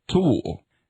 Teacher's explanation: The heavily aspirated alveolar stop, t,